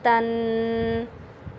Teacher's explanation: ثنایا علیہ کی جڑ کے ساتھ آپ نے زبان کی نوک کو لگانا ہے، اس کا مخرج ہے۔